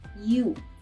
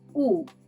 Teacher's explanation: In English, this vowel is pronounced as if there were an i in front of it.